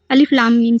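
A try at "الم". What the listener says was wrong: غنہ کریے. میم میں تھوڑا غنہ ناک سے. یہ اتنا دھیان رکھیے گا نا جب بھی اس میں ملا ملا کے پڑھیں گے تو جیسے لام میں میم مل جائے گا، میم میں سواد مل جائے گا، ایسے کر کے پڑھنا ہے.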